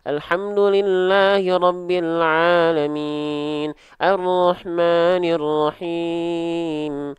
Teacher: Ditambah pakai suara hidung. Suaranya masuk hidung semua.